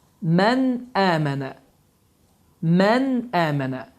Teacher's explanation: Yəni, heç bir sıxıntı, heç bir ixfə, yəni bu n səsi gizlədirmir, n səsi buruna verilmir. Açıq, aşkar bir şəkildə tələffüz olunur. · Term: izhar